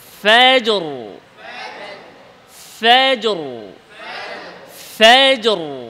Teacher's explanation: জিম ইস্তেফাল নিচে র ইস্তেলা উপরে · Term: র মোটা